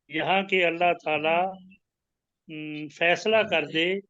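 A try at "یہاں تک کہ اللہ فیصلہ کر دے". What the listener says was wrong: यहाँ तक के अल्लाह फैसला कर दे, यहाँ के अल्लाह फैसला नहीं, यहाँ तक के अल्लाह फैसला कर दे।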